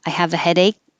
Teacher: You won't hear the K unless a vowel comes after it. So if I just said, I have a headache, I would stop.